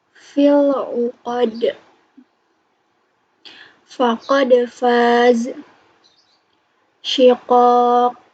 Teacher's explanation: makharijul huruf ko itu keluar dari pangkal lidah seperti huruf Q. Tidak boleh disertai keluarnya nafas.